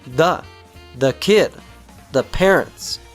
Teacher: both occurrences of the in this utterance are unstressed they sound like a weak syllable